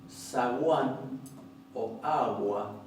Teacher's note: Si decimos, por ejemplo, zaguán o agua en una posición intervocálica, esa G se va a convertir en una fricativa casi aproximante